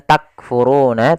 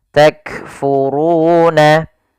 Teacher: di sini ada huruf kaf yang sukun. Ini perlu kita baca dengan bacaan hams. Jangan takfuruna, tapi dia takfuruna.